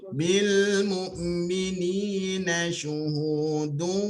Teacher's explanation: Di idgham ma'al gunna bersama dengan dengung.